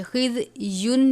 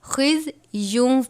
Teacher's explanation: خز یون نہیں پڑھنا بلکہ خز یوں پڑھیں گے، واو کی آواز نکلنی چاہیے. خز یوں وَلَهُمْ فِي الْآخِرَةِ عَذَابٌ عَظِيمٌ، زوا کو پر کر کے پڑھیں گے، عین کو باریک پڑھتے ہیں.